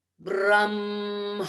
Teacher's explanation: There is not one sharp consonant, not one hard consonant. It's all soft consonants and vowels and nasal sounds.